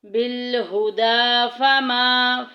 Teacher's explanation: الف اور پیچھے زبر آ گئی، الف مدہ کا قاعدہ جاری ہو رہا ہے، ایک الف کے برابر لمبا کریں گے۔